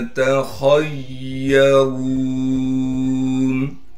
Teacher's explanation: या पर तशदीद होने की वजह से थोड़ा ठहराव करेंगे। रा को मोटा करके पढ़ेंगे इसलिए कि रा पर पेश है और फिर रा को हम वाव साकिन से मिला देंगे इसलिए कि वाव साकिन है और वाव हरूफ मद्दा में से है, लिहाजा रा को एक अलिफ के मिकदार खींचेंगे।